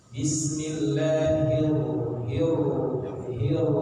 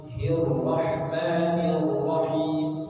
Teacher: paling bunyi getarnya dua atau tiga getaran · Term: takrir